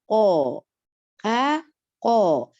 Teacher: il y a le fond de la langue qui va s'appuyer avec le palais mou, mais le fait de se détacher, quand on va lire, ils vont se détacher par vibration, première chose. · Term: la lettre qaf